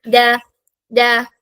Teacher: നാവിന്റെ അറ്റത്ത് എവിടെ ടച്ച് ചെയ്യണം മുകളിലത്തെ മുന്നിലെ രണ്ട് പല്ലിന്റെ ആ ബാക്ക് സൈഡിൽ ആ ഒരു റൂട്ടില് ടച്ച് ചെയ്യണം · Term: ദാൽ